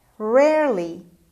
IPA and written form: ˈrerli (rarely)